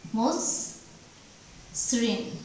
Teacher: যেমন মসৃণ, এটার উচ্চারণ হয়ে যাবে, এখানে দেখো ময়ের সাথে অযুক্ত আছে, আদ্য অ আছে, তারপরে ব্যঞ্জন বর্ণ দন্ত স, দন্ত স্বর সাথে রিকার যুক্ত হয়েছে, তাহলে এই আদ্য অ ময়ের উচ্চারণটা হয়ে যাচ্ছে ওকার